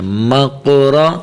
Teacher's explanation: موٹا کریں اور را کو بھی موٹا کریں، مقرا، ٹھیک ہے، یہ قاف کے اوپر تھوڑا سا قلقلہ کرنا ہے